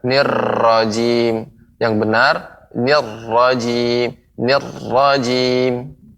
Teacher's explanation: pengucapan ro ya tidak terlalu banyak ya, getaran ro-nya